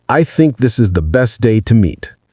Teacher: Say it with natural stress on think, best, and meet. The this and the are quieter, more reduced, but they still have the TH sound.